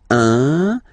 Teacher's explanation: it's what we call the nasal, so it goes in your nose, okay? So if you listen to me, you don't hear any N